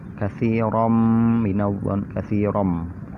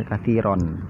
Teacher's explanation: Ya, idgham itu dimasukkan. Jadi bacaan tanwin itu dimasukkan ke mim.